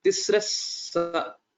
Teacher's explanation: there will be the visarga will change to sakara